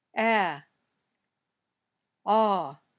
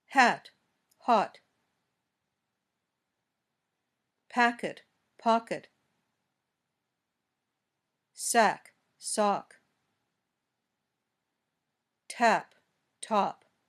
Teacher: when you say both of these sounds your tongue is low in your mouth and your mouth opens wider but when you say a your tongue is pushed forward in